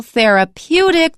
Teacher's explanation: Therapeutic, the stress is on the second to the last syllable.